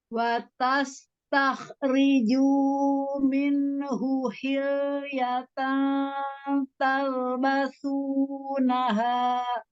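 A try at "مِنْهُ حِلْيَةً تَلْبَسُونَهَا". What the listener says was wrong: Masih belum idhar ya minhunya.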